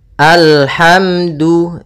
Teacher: da hukumnya makhrajnya pada ujung lidah menempel dengan di antara gusi dengan gigi atas.